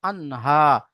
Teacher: এখানে নুন সাকিনের পরে হুরফে হালকি 6টি অক্ষরের মধ্যে হা এসেছে, তাই নুন সাকিনকে বিনা গুণা জাহির করে তাড়াতাড়ি পড়তে হবে